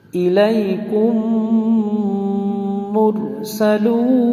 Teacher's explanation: মিম জজমের পরে মিমে তাসদিদ আসলে এখানে গুন্না করে পড়তে হবে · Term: ইদগামের সাফা